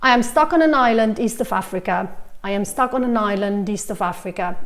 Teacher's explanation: you go like this you link all of them together because each one of these is finishing with a consonant sound and the next word is starting with a vowel sound